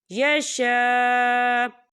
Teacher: یشاء، یا دیکھیں آپ کو چھوٹی سی توئیں بھی لکھی نظر آ رہی ہے، تو یہ وقف مطلق کی علامت ہے، تو یہاں پر ٹھہرنا بہتر ہے۔ وقف کی صورت میں حمزہ جو ہے ساکن ہو جائے گا